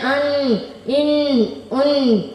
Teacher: نون کا مخرج زبان کی دونوں طرف ایک دانت سے لے کر دوسرے دانت تک اور اوپر کے دانتوں کے مسوڑے سے ادا ہوتا ہے